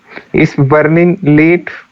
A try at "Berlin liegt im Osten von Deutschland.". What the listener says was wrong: इश कहाँ है इसमें?